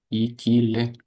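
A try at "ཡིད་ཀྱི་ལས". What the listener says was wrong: Ikile. Yi. Yi, not E. Yi. Ki. Le.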